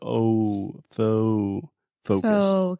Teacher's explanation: this is a pretty intense moving vowel so you really want to start with the o o and then move that into a u